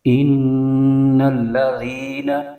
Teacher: زا کی آواز کے ساتھ نہیں پڑھنا، زال کی آواز کے ساتھ، زال کے مخرج کے ساتھ پڑھیں گے۔ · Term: زال کا مخرج